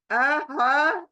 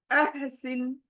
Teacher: ह की आवाज कहां आनी है हलक के बीच में आनी है अह सिन सिन सिन सीटी वाली अह सिन